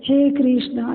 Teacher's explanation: प्लुत स्वर जो होता है, जो जब उच्चारण करते हैं तो उससे दीर्घ स्वर से भी तिगुना समय लगता है। दीर्घ स्वर से भी अधिक ज़्यादा जोर लगाना पड़ता है और उससे अधिक ज़्यादा समय लगता है।